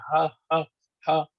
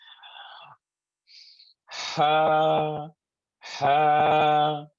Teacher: it comes from the bottom of the throat near the chest. Breathe in some air, breathe some more air, and then say this letter like ha, ha.